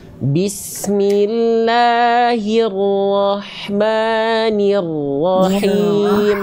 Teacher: huruf ro yang kedua jelaskan getarannya. Bismillahirrahmanirrahim.